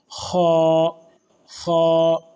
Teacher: خا، ایک خا ہوتا ہے اور ایک منہ گول کریں گے، اس میں وا کی آواز لاسٹ میں تھوڑی سی آئے گی، خا، خا۔ اس طرح سے یہ خا پر ہوگا، موٹا حرف ہے۔